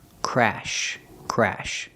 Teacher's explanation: Use the short A sound like black cat.